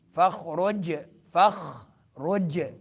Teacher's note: خا جو ہے حلق کے اس حصے سے جو منہ کے قریب ہے وہاں سے ادا ہوگا خا. اور جیم میں قلقلہ ہوگا.